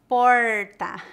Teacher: uma das características do sotaque de algumas regiões do centro-oeste é a pronúncia do Erre retroflexo